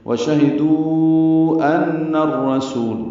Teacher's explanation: دال کو ہم 4 حرکات لمبا کرتے ہیں، مد عارض مد منفصل ہے، یہ 4 حرکات لمبا کریں گے۔